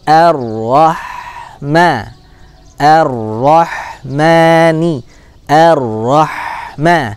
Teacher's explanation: Huruf ha as-sakinah punya karakter yaitu dia adalah rokhwah, mengalir. Kemudian dia juga punya hams ya.